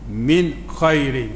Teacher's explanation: Min khairin, atas nun ada tanda mati, jangan dengung.